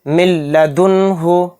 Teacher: یہاں پر نون ساکن آ گیا، نون ساکن کے بعد لام آ رہا ہے تو اس میں ادغام بلا غنہ کا قاعدہ ہو رہا ہے، اس میں ہم غنہ نہیں کریں گے، اس کو بلا غنہ کے جلد پڑھیں گے. یعنی نون سائلنٹ ہو جائے گا، لام پر تشدید آنے کی وجہ سے لام اب اس میم کے ساتھ مل کر پڑھا جائے گا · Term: ادغام لام